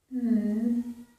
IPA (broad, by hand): ŋ